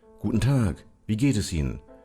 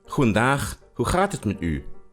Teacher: the G in Dutch is pronounced ch, and Dutch has lots of chs